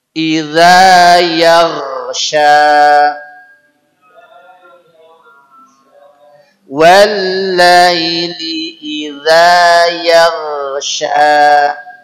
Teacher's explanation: Ini sudah makhrajnya di tenggorokan paling atas, tempatnya kha, tempatnya berdahak